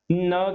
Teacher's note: न भी हमारी जीवा जो है वो हमारे दांतों के साथ टच करती है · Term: दंत्य